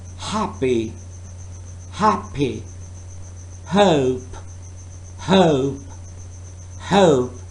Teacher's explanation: it's technically not even a real consonant sound, since there is no obstruction of airflow